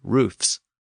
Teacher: that word has lost its plural V in many modern English dialects